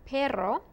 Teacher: if it's two double r's in the word como perro then you roll your r